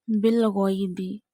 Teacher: Alladhina yu'minuna bilghaybi wa yuqimuna as-salata. Bilghaybi, you have to read ghain with a thick voice because this is a mustaliya letter.